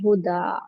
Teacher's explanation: पहले दो जबर आए तो उसको भी कन्वर्ट करेंगे स्टैंडिंग फतहा में और टू काउंट स्ट्रेच करेंगे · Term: मद्दे इवज